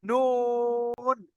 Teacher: জিভের আগা এবং তার বরাবর উপরের তালুর সাথে লাগিয়ে উচ্চারিত হয় নুন। এই জিভের আগা আছে, দেখেন আপনি ভাবে জিভটা রেখে দেন, তার উপরে যে তালুটা আছে, উপরে যে তালু, এটা তালু বলা হয়।